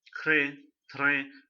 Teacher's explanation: this R sound has to be replaced with a bit of Kha